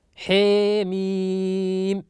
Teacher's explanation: أمال حروف حي طهر في أوائل السور نحو قوله تعالى حاميم يقرأها شعبة حيميم بإمالة الحاء